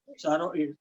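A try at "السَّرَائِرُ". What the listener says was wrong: Saro panjang di ro-nya.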